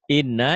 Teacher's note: Cuman bedanya kalau nun dan mim bertasjid selain double hurufnya jadi dua ditahan dan dengung. Dengung ke hidung itu gunnah. Ditahan ada panjangnya dua harokat ya atau satu alif.